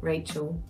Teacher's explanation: The way she says Rachel, taking that L out and giving it a W